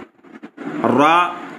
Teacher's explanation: जबान की नोक और मकाबिल के दांतों से अदा होता है।